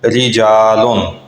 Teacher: اس کو رجالن ایسے موٹا نہیں کرنا، رجالن ایسے نہیں بلکہ باریک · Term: را باریک